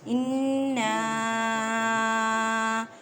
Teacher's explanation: اِنَّا نون مشدد ہے، اس وجہ سے گنہ کریں